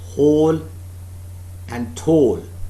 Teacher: whole tall please don't pronounce these words as hal and tal they are pronounced as whole and tall the long vowel sound o is used in them